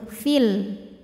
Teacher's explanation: dibaca panjangnya hanya saat berhenti saja kalau wasal Fiya pendek madnya gugur · Kalau wasol fi-nya pendek, madnya gugur. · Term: Mad Thobi'i, takhallus bil hadfi